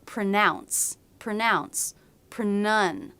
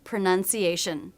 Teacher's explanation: Pronunciation is a noun, and sometimes people will mix up the pronunciation between this and the verb pronounce, pronun. So the second syllable should have the vowel and not the ow diphthong